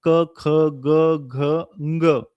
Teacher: क ख ग घ या सर्वांचा उच्चार कंठातून होतो